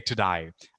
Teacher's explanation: Our teachers say today. But Australians have a way of saying day as die.